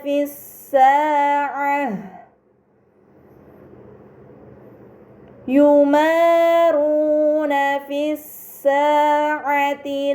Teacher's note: hamzah wasl pada alif lam dibaca fathah, lam pada lam syamsiyah tidak dibaca namun langsung dibaca huruf setelahnya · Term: alif lam syamsiyah